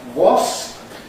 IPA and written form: wɒsp (wasp)